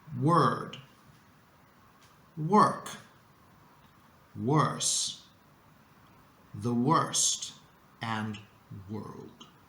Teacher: another way of dealing with these difficult words is to do it the American way which is by lengthening the r sound · do it the American way, which is by lengthening the R sound, okay? Basically, imagine that the letter O is not there, and you will end up with work, word, worse, the worst, and world, which is perfectly fine.